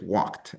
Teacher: it's not just walked with a D sound at the end, but you have more of a T sound at the end